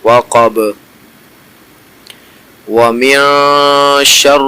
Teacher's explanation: اخفا والا غنہ ہو رہا ہے تو ہم ناک میں آواز لے کے جائیں گے